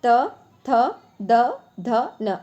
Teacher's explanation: ऐसे वर्ण जिनका उच्चारण दंत के स्पर्श से होता है, दांतों के स्पर्श से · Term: दंत वर्ण